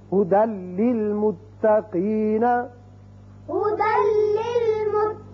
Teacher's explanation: تنوین کی مثال لام کی هُدًى لِّلْمُتَّقِينَ، هُدًى لِّلْمُتَّقِينَ. یعنی دال کی ایک زبر لام سے ملے گی اور بغیر غننے کے پڑھا جائے گا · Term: ادغام بغیر غنہ